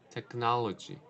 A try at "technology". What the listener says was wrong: you have a habit of saying technology. You're omitting the last syllable. So, mhm, be aware of when you say technology.